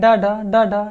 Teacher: जीभ की नोक जो ऊपर जाके तालू से लगेगी, तुरंत झटके के साथ नीचे आ जाएगी। बोलेंगे डा डा डा डा, जैसे बोले डा डा तो जीभ ऊपर गई और जाने के बाद तालू पे टच किया और तुरंत जो है तालु को छूने के बाद या तालु को स्पर्श करने के बाद तुरंत जो है नीचे आ गई। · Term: उत्क्षिप्त व्यंजन